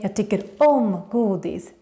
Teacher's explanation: I personally use a little bit more gillar just because it's shorter, and also because when you say tycker om, you really need to put the stress on the om